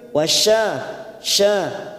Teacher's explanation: Sya dua harakat kita panjangkan fathah diikuti Alif